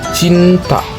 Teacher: Ujung lidah mendekati langit-langit depan suara seperti C.